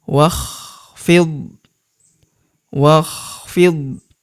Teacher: alifnya tidak dibaca atau tidak dianggap ini adalah hamzah wasal ya wakfid wakhfid hamzah wasal adalah hamzah penyambung antara kata sebelumnya dan kata setelahnya ya.